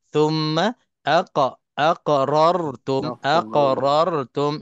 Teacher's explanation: thumma macam biasa, tha ni keluar lidah